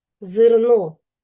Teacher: Ненаголошений звук е вимовляємо з наближенням до и.